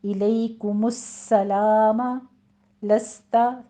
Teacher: سین کے اوپر تشدید ہے، سیٹی کی آواز کے ساتھ اس کو سختی سے ادا کریں گے۔ الیکم السلام، لستا، یہ بھی سین کے اوپر حمس ہوگا سیٹی کی آواز کے ساتھ۔